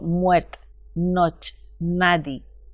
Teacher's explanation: Ahora llegamos a estudiar algunas características de la lengua castellana en el siglo XII. Allí destaca la pérdida de vocales, especialmente la E al final de la palabra.